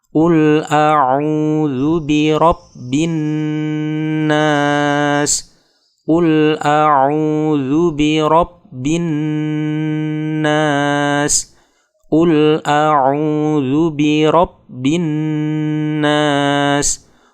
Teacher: qul auzubirabbinas qul auzubirabbinas qul auzubirabbinas qul auz qul auz qul auzet Saat melafalkan "qul", yang perlu diperhatikan adalah menjaga huruf Qaf agar keluar sesuai dengan titik artikulasinya (makhraj). Makhraj atau titik keluar huruf Qaf adalah bagian belakang lidah dekat uvula dengan langit-langit mulut tepat di atasnya . Kecenderungannya, jika tidak hati-hati, huruf Qaf ini akan berubah menjadi huruf Kaf.